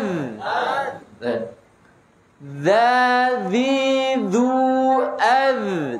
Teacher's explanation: Dal ujung lidah bertemu dengan ujung gigi seri atas. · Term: jahr